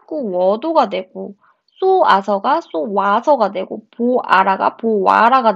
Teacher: 반모음 오우가 첨가된 예시입니다